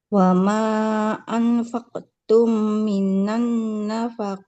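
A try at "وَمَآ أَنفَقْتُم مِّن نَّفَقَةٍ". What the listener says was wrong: Enggak minan. Ini nun sukun. Min nafaqatin bukan minan. Karena minannya kan gak berharokat ya.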